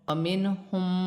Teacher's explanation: نون ساکن میں غنہ نہیں ہوگا کیونکہ آگے ہا حروف حلقی میں سے ہے